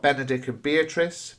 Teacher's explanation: both names again beginning with a plosive B sound, a B sound.